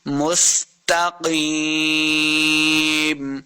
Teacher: سین پہ سیٹی کی آواز آئے گی · قاف کو موٹا پڑھیں گے. قاف حروف مستعلیہ سے ہے. قاف زیر یا قی، یہ مدہ ہو رہا ہے، یہاں پہ اس کو دو حرکات لمع کریں گے اور آخر پہ ہم نے وقف کرنا ہے.